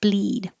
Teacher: now the vowel is e very high